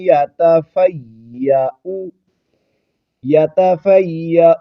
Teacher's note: اس کو یا کو جماؤں کے ساتھ ادا کرتے ہوئے آگے ہم نے حمزہ کے اوپر پیش پڑھنی ہے اور اس کو لمبا نہیں کرنا